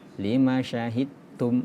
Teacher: Ketika huruf da bertemu dengan ta, maka dihilangkan huruf qalqalanya. Lima syahidtum melebur dengan huruf ta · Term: idgham mutajanisain